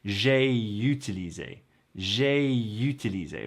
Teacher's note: Naturally, this will flow together and sound like there may be a y there, but there isn't really.